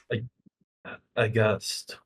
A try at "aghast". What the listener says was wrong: But because it's the end of a phrase, you want to finish low. So you're going to have to change this word from high to low. Aghast. Aghast.